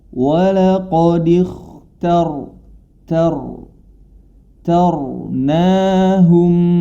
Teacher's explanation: ta tanya tetap dibaca fathah ta namun ketika masuk ro rnya yang menjadi tebal hati-hati tanya tetap ta istifal tetap tipis ketika ro dibaca baru